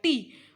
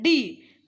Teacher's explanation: For example when a person forms a टी, he is not being his vocal cord. जब वो टी बोल रहा है तो उसमें वोकल कॉर्ड का यूज नहीं हो रहा है। So this is referred as voiceless dental stop.